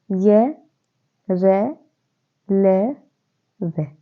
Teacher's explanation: य का उच्चारण होता है तालव्य से, रे का होता है मूर्धन्य से, ले का होता है दंत्य से और वे का दंत्य ओष्ठ्य, मतलब दांतों से और ओष्ठ्य से, होठों से। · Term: अंतस्थ व्यंजन